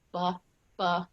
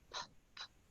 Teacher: if you go B, B, you can feel your voice box vibrating, or P, P, there's no vibration. So that's an unvoiced sound.